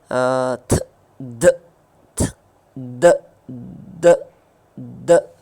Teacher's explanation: so tip of द tongue is touching back of द teeth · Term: डेंटल